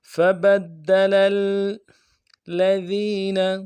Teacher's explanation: فَبَدَّلَ الَّذِينَ ظَلَمُوا قَوْلًا لفظ فبدل میں فا کو نرمی سے ادا کرنا ہے، با کو دال کے ساتھ ملانا ہے، دال کے اوپر تشدید زور دیں گے۔ فبد لل، لام کو آگے لام کے ساتھ ملانا ہے